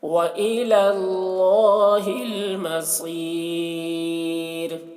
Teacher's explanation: صاد کو پر پڑھیں گے، صاد حروف مستعلیہ میں سے ہے، اور را کو باریک پڑھیں گے کیونکہ یہاں پر وقف کی وجہ سے را کا پیش سکون سے بدل جائے گا، تو را ساکن سے پہلے یا ساکن ہے، جب را ساکن سے پہلے یا ساکن ہو تو را کو باریک پڑھتے ہیں۔